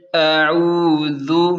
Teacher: حمزہ زبر عین واو پیش عو، ذال پیش ذو، اعوذ، عین کو حلق سے نکالیں اور ذال کو بالکل نرمی سے ادا کریں